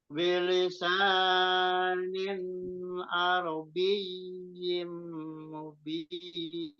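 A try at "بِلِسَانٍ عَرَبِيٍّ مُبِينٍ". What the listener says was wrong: Jadi bilisa, sa-nya jangan terlalu panjang. Ingat konsentrasi di huruf apa namanya matobi'i ya. Jadi konsisten. Bilisanin arabiyim mubin.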